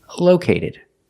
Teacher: move the stress to the first syllable.